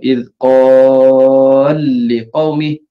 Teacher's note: Kena tekanlah pada lam yang kedua tu.